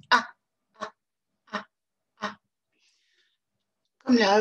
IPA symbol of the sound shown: ʌ